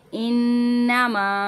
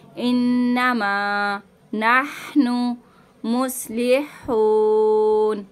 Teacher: यहाँ पे नून मुशद्दद का हम गुन्ना करेंगे। गुन्ने की मिकदार भी 1 अलिफ की होती है और मद्दा की मिकदार भी 1 अलिफ की होती है।